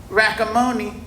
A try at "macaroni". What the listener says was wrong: No, you got your letters mixed up. It's not rackamoni, it's macaroni. Try it again.